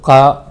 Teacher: का में आ भी छिपा हुआ है जब बोलते हैं का तो आ निकलता है